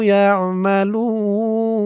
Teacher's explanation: অক্ফ করার কারণে পেশের পরে ওয়াও সাকিন এক আলিফ টান ৩ আলিফ হয়ে গেছে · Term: মধ্যে আরজি